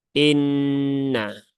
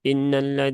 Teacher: ketika ada Nun yang bertasdid ya kita tunaikan ee kita tahan ee dengan durasi tiga harakat